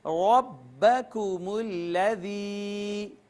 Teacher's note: را کے اوپر زبر ہے تو اس کو ہم پر کر کے پڑھیں گے